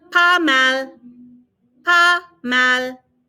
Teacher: Notice I'm not pronouncing the S. We very rarely pronounce S's on the end.